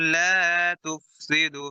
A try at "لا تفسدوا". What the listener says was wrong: তুফসিদুতে মাদ হবে। এই যে পেশের পরে ওয়াও আছে। পেশ আছে, এই যে এখানে ওয়াও সাকিনের আগে পেশ আছে, লা তুফসিদু।